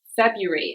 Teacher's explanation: the pronunciation is February, and we don't pronounce that R